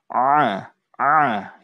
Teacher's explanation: salah satu huruf yang keluar dari tenggorokan ya tenggorokan bagian tengah kemudian tenggorokan kita itu ditekuk ya Ah Ah ya harus dipaksa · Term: huruf Ain